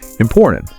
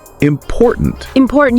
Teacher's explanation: You kind of swallow that T · You really hear that middle T. Yeah. It's so crisp and sharp.